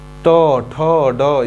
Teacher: ट वर्ग को मूर्धा से बोलते हैं